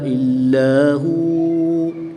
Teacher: وقف کی حالت میں واؤ کے زبر کو ساکن کر دیں گے تو یہاں پر وقف کی حالت میں واؤ مدہ ہوگا، 1 الف یعنی 2 حرکات کے برابر کھینچ کر پڑھیں گے۔